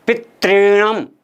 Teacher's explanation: यहाँ री की डबल मात्रा लगी हुई है दोस्तों, दीर्घ री बोलते हैं इसको। इसके उच्चारण करने में वास्तव में हमारी जीभ में 5 बार कंपन होना चाहिए दोस्तों, पितृणम। तो यहाँ पर 5 बार वाइब्रेशन जब तक नहीं होता है तब तक इसका सही उच्चारण नहीं होता है दोस्तों।